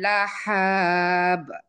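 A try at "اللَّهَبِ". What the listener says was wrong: লাহাব, হা ভিতর থেকে।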